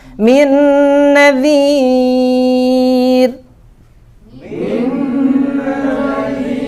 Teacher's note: Ya, jadi idgham sempurna ya. Jadi nun pertama itu nggak dibaca, sama sekali nggak dibaca. Dia masuk ke dalam huruf nun berikutnya. Ya, jadi ini idgham kamil.